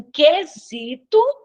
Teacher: Então, aqui, ó, em, eu tenho um dígrafo, mas é vocálico, né? Aqui em quesito, eu não escuto o U, então eu tenho um dígrafo consonantal. Em ambiente, ó, eu tenho um dígrafo vocálico, em outro dígrafo vocálico, né?